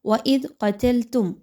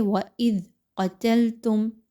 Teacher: قاف حروف مستعلیہ میں سے ہے، قاف کو خوب موٹا کر کے پڑھیے، باریک نہیں پڑھنا۔ · ذال کو نرمی کے ساتھ پڑھیے، زا کی طرح سختی کے ساتھ نہیں پڑھنا، سافٹلی پڑھنا ہے۔ زبان کی نوک کو تھوڑا سا باہر نکالیں، دانتوں کے درمیان میں دیجئے۔